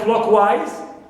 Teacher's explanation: wise is neutral suffix, clear, and clock is stressed.